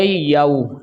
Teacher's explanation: یہ واو لین ہے، اس کو نرمی کے ساتھ پڑھیں گے، نہ ہی ہم اس کو جلدی پڑھیں گے نہ ہی اس کو کھینچ کے پڑھیں گے